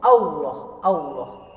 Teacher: ketika fathah bertemu dengan lafadz Allah maka di tebalkan